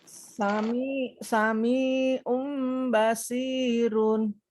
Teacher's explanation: ada tanwin u bertemu huruf ba jadi dia menjadi mim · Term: iqlab